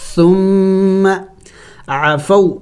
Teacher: ساکن سے پہلے جب زبر آ جائے تو یہ بھی حروف لین میں سے ہیں، تو اس کو جلد پڑھنا ہوتا ہے